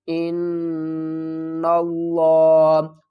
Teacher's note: نون مشدد ہے، اس پر غنہ کریں گے اور پھر اسی نون کو لام، لفظ اللہ کے لام سے ملائیں گے اور سختی کے ساتھ پڑھیں گے۔ اس لام اور اس الف کو نہیں پڑھیں گے۔